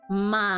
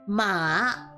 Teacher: third tone is basically going down then back up